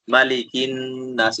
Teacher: نون آگے نون مشدد ہے تو نون مشدد کا گنہ ہوگا